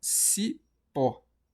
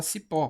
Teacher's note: Portanto, o pó, ele é a sílaba tônica.